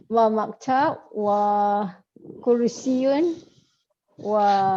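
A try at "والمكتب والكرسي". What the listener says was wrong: Yan yin yun ban bin bun tak perlu sebut. Jangan sebut.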